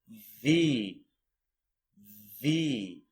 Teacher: Your top teeth are touching your bottom lip here.